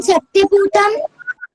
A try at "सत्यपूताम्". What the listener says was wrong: पूतम नहीं, पूताम है, सत्य पूताम है ना। पूतम आप पूछ सकते हैं मुझसे, आपको क्वेश्चन करना चाहिए कि पूतम मैंने अशुद्ध क्यों बोला है, यहाँ पूताम लिखा हुआ है ना। ऐसा है क्योंकि वाचम शब्द जो है वो स्त्रीलिंग है, तो सत्य पूताम आएगा।